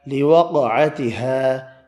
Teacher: لوقعتها، قاف ساکن ہے، قلقلہ کیا